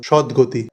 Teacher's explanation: কারণ দুটো পরপর ঘোষ বর্ণ উচ্চারণটা সহজ হবে সেই কারণেই এই ঘোষ বর্ণের প্রভাবে তটা উধাও হয়ে গেল তাই পুরোপুরি ত উধাও হয়ে গিয়ে এখানে দ বসে গেল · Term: অঘোষ বর্ণ ঘোষ হলো